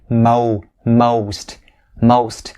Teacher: the o sound it has to be round and very enunciated